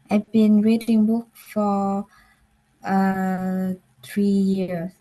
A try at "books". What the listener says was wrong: So just remember to pronounce, can you say books? Books. Okay, just remember to make the S sound clear. Okay, I've been reading books.